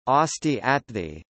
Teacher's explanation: Sanskrit sibilants before a stop assimilate to that stop, and if that stop is not already aspirated, it becomes aspirated